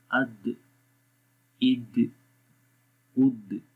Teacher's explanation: آواز آپ کی زبان کی نوک ثنایا علیہ کی جڑوں پہ لگ رہی ہے اور ایک دم وہاں سے اٹھ رہی ہے. تو یہ جو اٹھنا ہوتا ہے زبان کا تو یہ قلقلہ کہلاتا ہے.